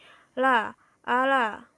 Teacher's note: artikulator aktif menghambat aliran udara pada bagian tengah mulut, lalu membiarkan udara keluar melalui samping lidah. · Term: lateral approximant